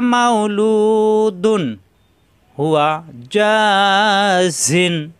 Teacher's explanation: তানবিনের পরে আসছে হা, স্পষ্ট হবে, গুণ্য হবে না।